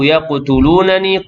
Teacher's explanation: Wa kadu yaqtulunani, qaf yang sukun, qalqalah sughra